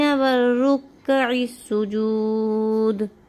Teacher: ایک تو را کو موٹا کریں گے آپ، ایک عین کے بعد حلق میں سے نکالیں گے